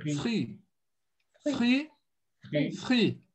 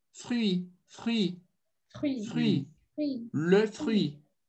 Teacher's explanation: Façamos apenas o free com o biquinho, que é o correto, tá? O som de I e biquinho.